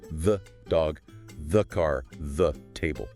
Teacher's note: when the is followed by a consonant sound, it must reduce to thuh using the schwa sound, duh. It is just a quick tensing sound, the dog, the car, the table.